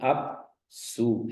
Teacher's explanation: अप के बाद जो सु बोला मैंने, उसमें थोड़ा सा काल का व्यवधान बन गया। सामान्य रूप से हम जो बोलते जाते हैं वर्णों को, उसमें भी एक काल लगता है, उसमें भी काल तो लग ही रहा है, लेकिन ये जो अवग्रह में थोड़ा सा अधिक काल का व्यवधान होता है।